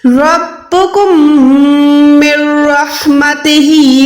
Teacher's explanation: मीम को direct रॉ के साथ, रॉ शब्द के साथ मिला के नून को छोड़ देना है। यहाँ पर भी बगैर गुन्ने वाला इद्गाम होगा।